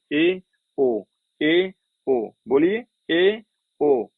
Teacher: इसमें क्या होता है आपका मुख द्वार आधा ही बंद होता है